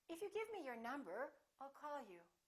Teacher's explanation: that you're not finished that you have something more to say let your pitch go up at the end of the first part of your sentence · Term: rising intonation